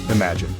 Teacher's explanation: This word is broken down into three syllables, imagini. The emphasis is on the first syllable, im.